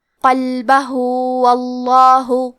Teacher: آخری میں ہاں پہ الٹا پیش ہے. یہاں حکم ہے مد صلہ صغرا تو ہم اپنی آواز 2 مد کے برابر لمبی کریں گے · کلمت قلبہ میں حرف القاف کی ادائیگی زبان کے جڑ اور تالو کے نرم حصے سے ہے. قاف حروف التفخیم میں سے ہے تو ہم یہ حرف کو موٹی آواز میں پڑھیں گے. کیونکہ یہاں لام ساکن ہے تو ہمیں لام کو ظاہر کرنا ہے.